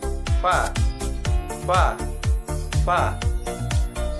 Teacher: Sifatnya berdesis lepas, hamas, lunak, dan suara tidak tertahan, rohoa. Lidah di atas, istifal, terbuka antara lidah dan langit, langit atas, infitah, keluarnya lancar atau ringan, idlaq.